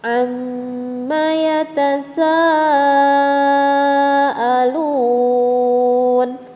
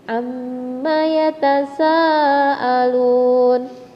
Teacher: mad wajib muttasil panjangnya lima harkat